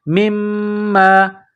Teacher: میم میں غنہ کرنا ہے، آواز ناک میں چھپانی ہے